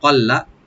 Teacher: লামটাকে double করে পড়বো, এখানে টান হবে না